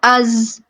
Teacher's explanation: اسی طرح اگر ہم از کی بات کریں، حمزہ زا زبر از، تو زبان کہاں لگ رہی ہے، ثنایا سفلی کے اندرونی کناروں کو، ہمارے دانت آپس میں کیا ہو رہے ہیں، بند ہو رہے ہیں. از اور سیٹی کی آواز آ رہی ہے کیونکہ یہ حروف صفیریہ میں سے ہیں